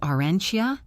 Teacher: The T and Y blend together to make a ch sound.